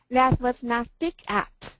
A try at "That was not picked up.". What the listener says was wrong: Get the not. The not is more important. That was not picked up.